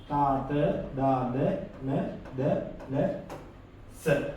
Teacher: දිවේ අග කොටස උඩු දත් වැටියේ ස්පර්ශ වීමෙන් උපදින ශබ්ද දන්ත ජාක්ෂර කියලා අපි හඳුන්වනවා.